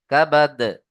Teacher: আমরা দালকে এখানে সাকিন করব আর দাল হরুফে কলকলা কলকলা করতে হবে